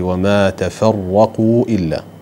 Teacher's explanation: التاء والفاء مرققات، الراء لأنها مفتوحة تكون مفخمة